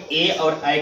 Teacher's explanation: ए और ऐ का उच्चारण किससे होगा? कंठ और तालु से होगा। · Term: कंठ तालु